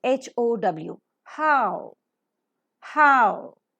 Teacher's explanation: with an open mouth ah and U combination which is pronounced as AO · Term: diphthong